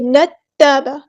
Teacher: تا ہمارا جو ہے وہ تشدید والا، تو ایک بار ساکن کر کے ایک بار اس کی حرکت کے مطابق پڑھیں گے